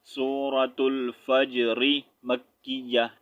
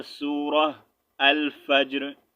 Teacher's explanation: रा को साकिन नहीं करूँगा, फिर रा के नीचे ज़ेर पढ़ूंगा, जो इसके नीचे ज़ेर आपको नज़र आ रही है, ठीक है।